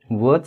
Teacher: वचा उच्चार करत असताना ओठ आणि दातांचा उपयोग करावा लागतो, म्हणून यांना दंत्योष्ठ वर्ण म्हणतात